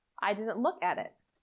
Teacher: The T in didn't can disappear, but the other 2 need to be pronounced.